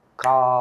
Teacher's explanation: நெடில் எழுத்தாக அது மாறக்கூடிய நேரத்தில் அதை மாறும்போது அதை உச்சரிப்பதற்கு இரண்டு மாத்திரை அளவு நேரம் ஆகும்